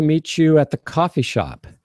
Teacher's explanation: I'm not hitting that t because I'm condensing my language